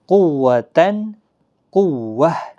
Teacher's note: تو آگے قوتاً قوہ، یہاں بھی وقف بالابدال ہوگا، جو گول تا ہے ہا ساکن میں بدل جائے گی